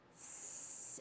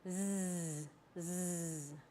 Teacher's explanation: You make this sound just like the S sound. You take your tongue and put it really close to the alveolar ridge and produce air. S. And then you turn your vocal folds on for the Z.